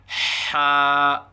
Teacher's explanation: حا کو وسط حلق سے ادا کریں